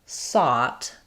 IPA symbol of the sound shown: ɔ